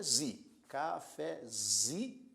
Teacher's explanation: cafezinho por sua vez já é uma palavra paroxítona porque paroxítona veja que a sílaba mais forte é Zi · Veja que a sílaba mais forte é zi, cafezinho. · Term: sílaba tônica